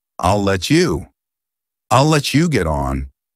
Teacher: because it's I'll let there's just one L Sound